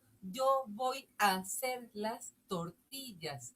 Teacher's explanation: entre la A de voy a y la HA de la primera sílaba de hacer se pegan porque suena A igual y entonces eso se llama sinalefa y le restas una sílaba.